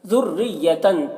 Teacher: ذریتن تا میں جو تنوین ہے، اس تنوین میں اخفا ہو رہا ہے، یہاں پر تنوین کی آواز کو ناک میں چھپا کر ایک الف کی مقدار کھینچ کر پڑھنا ہے